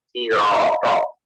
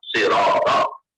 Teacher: As-sirata itu ada yang baca dengan sin sirata, ada yang membaca dengan shad sirata, ada yang membaca dengan ismam sirata.